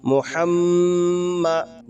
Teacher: میم کے اوپر تشدید ہے تو میم کے اوپر گنہ ہوگا